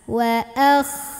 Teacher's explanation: Ayat kedua, huruf ini huruf kho, hati-hati dibaca wa akhrajatil. Nah, pangkal lidahnya naikin ya, keluarnya dari tenggorokan paling atas. Wa akh, kayak ada ngorok-ngoroknya ya, enggak terlalu bersih tapi ada kotor-kotornya.